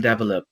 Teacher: is placing the stress on the last syllable in develop